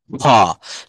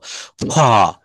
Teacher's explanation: দেখেন মুখ থেকে একটু জোরে বাতাস বের হলো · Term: অ্যাসপিরিয়েটেড সাউন্ড